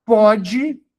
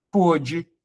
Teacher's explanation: A sílaba tônica é a mesma, no presente, pronúncia aberta, no segundo, no pretérito, pronúncia fechada, por isso acento circunflexo, tá?